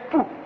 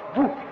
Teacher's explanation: le P égyptien, qui était une occlusive sourde, a été sonorisé parce qu'elle s'est trouvée presque en position intervocalique, elle s'est trouvée en position intervocalique, elle est par conséquent devenue sonore en Wolof et nous avons bou à la place du P.